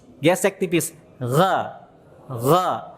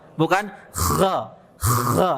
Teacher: Gesekannya jangan terlalu kasar. Dikit aja, tipis. Gesek tipis.